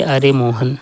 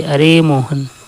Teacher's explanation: दूर से किसी को बुलाने में समय भी प्लुत उच्चारण किया जाता है